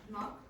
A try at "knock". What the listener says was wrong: Yeah, and what's missing? Or the silent letter? K, exactly. Don't say knock.